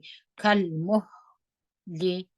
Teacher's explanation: میم په زور پیش د ها سره وجنګوي پر ها باندې همس وکي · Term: ها همس